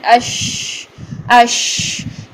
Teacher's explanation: زبان لگے گی تو صحیح تالو کے ساتھ، لیکن ہلکی سی ٹچنگ پوائنٹ پر رہے گی، ٹھیک ہے. پوری جا کر چپکے گی نہیں جیم کی طرح. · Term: شین